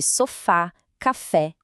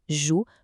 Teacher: São as palavras onde a sílaba forte é a última. Isso mesmo, aquela que fica bem no finalzinho da palavra. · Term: oxítonas